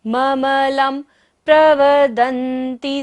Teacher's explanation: प फ ब भ म होता है तो बिंदी का उच्चारण म होता है